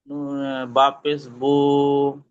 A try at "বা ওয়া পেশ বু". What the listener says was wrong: না, বা, হ্যাঁ এটা বলতে হবে কেন? বা পেশবু শুধুমাত্র হারাকাতের হরফ, তাড়াতাড়ি পড়তে হয়, কিন্তু বা ওয়া পেশবু মানে কি এটা মাদের হরফ, মানে এটা একালি পরিমাণ টেনে পড়তে হবে।